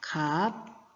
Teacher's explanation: 즉 기역 시옷이 기역으로 시옷이 탈락했습니다. 비읍 시옷이 비읍으로 역시 시옷이 탈락했습니다. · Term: 자음군 단순화